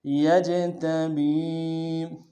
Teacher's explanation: جیم حروف قلقلہ میں سے جب ساکن ہوگا تو قلقلہ کریں گے